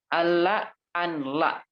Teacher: Secara tulisan ada huruf nun tapi secara baca nggak ada. Nun ini sudah karena sudah diidghamkan, idgham itu kan dimasukkan gitu kan.